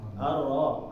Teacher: Maka kita bukan mempraktikkan yang sempurna ini, tapi menjaga takrirnya dia cuma sekali getaran. Getarannya benar-benar dikurangin. Jadi misalnya ro dia ketika tasydid ketika dia berharokat tasydid, maka contohnya arro.